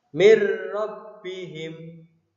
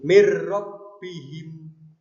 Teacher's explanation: Mir rabbihim, dimasukkan huruf nun sukunnya dimasukkan ke dalam huruf ro tanpa berdengung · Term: idgham bila gunnah